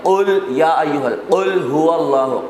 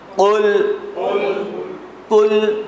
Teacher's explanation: بڑے قاف کو ہمیشہ موٹا پڑھتے ہیں، اگر جزم کے ساتھ ہو تو پھر اس میں جھٹکے آئیں گے، مراد یہ ہے کہ وہاں پر قلقلہ ہوا.